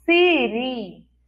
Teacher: O som, ele quer sair como se estivesse querendo crescer. É um som forte, mais agudo. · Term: I forte